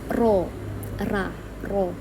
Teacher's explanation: ujung lidah menyentuh gusi atau gusi atas dekat dengan makhraj nun